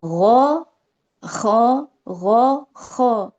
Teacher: Jadi pangkal lidahnya juga sedikit mengangkat dan suaranya itu kayak menggumpal gitu ya. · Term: ghoin dan kho